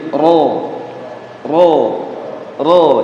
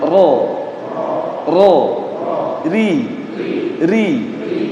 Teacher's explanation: Getaran yang dimiliki oleh satu huruf yaitu huruf ra. Nah, takrir atau getaran yang dimiliki huruf ro ini hanya 2 getaran saja